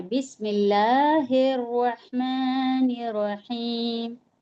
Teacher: بسم اللہ میں جو لفظ اللہ ہے کہ اس کو موٹا نہیں پڑھنا ہے، ہمیں باریک پڑھنا ہے